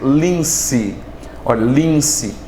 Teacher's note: esse N está nasalizando a vogal I